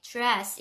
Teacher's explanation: 그래서 D하고 R이 오면 약간 디귿하고 지읒 사이 dress 이렇게 들려요.